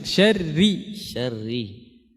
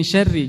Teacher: Jadi ra kasrah itu tipis.